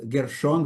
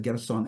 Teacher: Because in Greek, there is no sh sound.